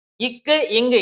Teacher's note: இந்த ரெண்டு எழுத்துக்களும் நம்ம நாவோட முதற்பகுதியும் அன்னத்தோட அடிப்பகுதியும் சேர்றதுனால பிறக்குது